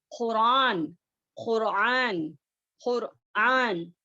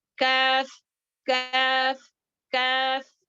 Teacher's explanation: خوف کو جو ہے سافٹ پارٹ پر ہماری زبان کی جڑ جا کر ٹچ ہوتی ہے اوپر بلند کرتے ہوئے، لیکن کاف کو جو ہے تھوڑا ہارڈ پارٹ ہمارا جو رہتا ہے سخت حصہ وہاں پر ٹچ ہوتا ہے